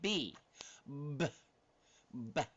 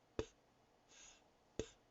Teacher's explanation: Same location. The only difference is one is voiced and one isn't voiced.